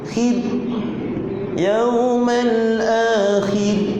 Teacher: Huruf ra sebelumnya pada bawah dibaca dengan tarqiq. Wajib tarqiq.